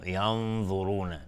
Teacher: و اینجا دقت بکنید، ینظرون نون هم تقریبا یک حالت مفخم اینجا به خودش میگیره، چون بعدش حرف مفخم بوده